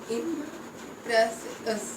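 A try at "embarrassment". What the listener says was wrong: पी नहीं है, बी है। इम्बैरेसमेंट। इम को आई एम को अलग कर दो, मेंट को अलग कर दो, फिर ये बीच वाला सेंटर अलग। इम को इधर करो, इम बैरे बैरे बैरे इम्बैरेसमेंट। इसको हिंदी में लिख लो, हिंदी में लिख लो इसको। हिंदी में लिखो, ई छोटी ई एम, इम्बैरेसमेंट।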